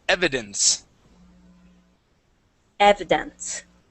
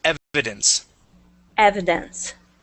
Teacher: the accent is at is at the very beginning of the word